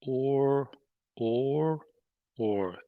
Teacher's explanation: So the tip of the tongue curls up for the R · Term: R sound